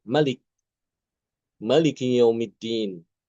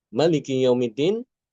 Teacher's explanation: mereka semua memendekkan kata Malik ya. Malik dibaca Malik Maliki yaumiddin.